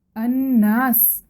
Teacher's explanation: الناس پڑھنا بغیر نون کے غنہ کے، یہ ایک مائنر مسٹیک ہے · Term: غنہ نہ کرنا